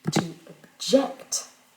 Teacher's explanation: dans to object, on va réduire la voyelle de la première syllabe dans le verbe